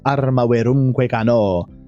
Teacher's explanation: The stress of cano is cano. Meter itself wants the stress to be on the o and cano.